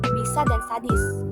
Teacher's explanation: Ejaan fonetik yang pertama dengan lambang fonetik I terbuka dengan bunyi yang dihasilkan yaitu bunyi depan tinggi dan tak bulat